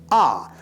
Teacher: Phonetically, it represents an open front unrounded vowel A, produced with the mouth wide open. The tongue positions low and toward the front, and the lips unrounded with the sound held for a longer duration